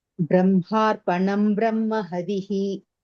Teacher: Brahma, ha and ma, both has to be heard clearly